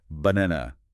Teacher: In English, it's banana. See how the first and last syllables are almost entirely swallowed?